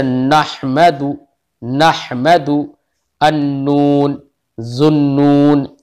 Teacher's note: سرا زبان تالو سے مل کر نون ادا ہوتا ہے. سرا زبان تالو سے، زبان کا سرا بالکل اگلا حصہ جو ہوتا ہے وہ سرا زبان کہلاتا ہے.